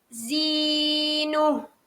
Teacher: Huruf ya ni adalah huruf mat. Maka perlu panjang dia 2 harakat.